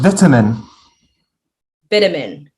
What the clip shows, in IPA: ˈvɪtəmən